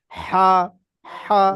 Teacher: গলার ভিতর দিয়ে চেপে বার করতে হবে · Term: বড় হা